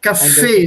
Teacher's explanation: yeah okay cafe it's is syllables two syllables the break here the stress is on the second syllable